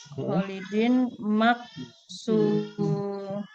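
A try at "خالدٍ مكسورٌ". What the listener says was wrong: Ahsanti, Masya Allah.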